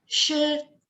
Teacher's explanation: Jadi dia tinggi tapi datar. Makanya simbolnya garis lurus di atasnya. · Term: Tone pertama